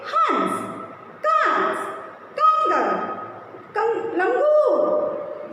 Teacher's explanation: अंग का प्रयोग, जिसे हम अनुस्वार कहते हैं, हमेशा नाक से की जाती है।